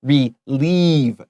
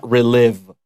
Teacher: 那 个 IE 的 部 分 它 要 发 E 那 种 比 较 长 的 音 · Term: long E